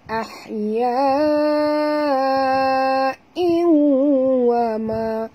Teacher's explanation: Mat wajib mutasil 4 hingga 5 harakat. Kena baca panjang. Nampak tanda panjang ya. · Tanwin baris 2 bawah bertemu dengan waw. Masuk dengan dengung.